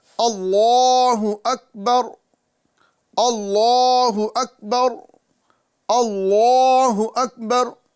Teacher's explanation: ہم اس میں جلالت اللہ کے لام کو پر کریں اور اس کو ایک الف کے برابر کھینچیں، اور ساتھ ہی ساتھ کاف کی ادائیگی کا خاص خیال رکھیں۔